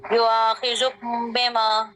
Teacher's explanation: इख्फा में मीम साकिन जो है इसको हम नाक में लेकर जाएंगे, इसकी साउंड मीम को। को नाक में ले जाएंगे जी।